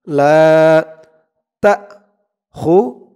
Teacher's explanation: লা জবরের পরে খালি আলিফ, এক আলিফ টান।